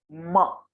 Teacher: इसका उच्चारण ओष्ठ और नासिका के प्रयोग से होगा